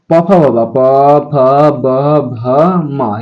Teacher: उसके बाद आता है ओष्ठ, यानी प, फ, ब, प, फ, ब, भ, म, यानी प वर्ग का उच्चारण स्थान।